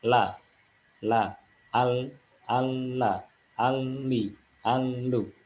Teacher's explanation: Nah sekarang tepi bagian ujung bagian ujung bisa keluar huruf lam Hai ujung peti lidah pada posisi gusi gigi seri atas Hai